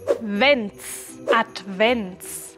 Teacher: En Vents debemos pronunciar la V como una W alemán colocando los dientes superiores en el labio inferior, ya que Advent es una palabra que viene del latín.